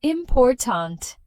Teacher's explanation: we stress the second syllable important. Stressing the wrong syllable can make you difficult to understand. · word important, we stress the second syllable, important.